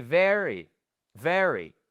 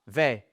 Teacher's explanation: la première syllabe, c'est sur le V, le E. C'est là où vous avez votre stress. Et ensuite, le pauvre petit Y, bam, il est un peu laissé à l'abandon, on l'entend mais pas beaucoup à la fin.